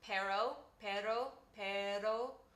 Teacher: sometimes people use an r called an alveolar tap or a tapped r